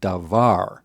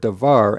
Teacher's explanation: The first vowel reduces to vocal shawah. The second change is that the second vowel shortens to pak.